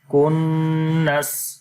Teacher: نون کے اوپر غنہ اور سین کے نیچے زیر کو سکپ کر دیں گے کنس. تو سارا ملا کر پڑھیں گے بالخنس الجوار الکنس بالخنس الجوار الکنس.